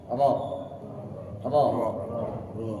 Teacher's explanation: kalau dia tebal getaran dari ujung lidah itu hanya satu sampai dua saja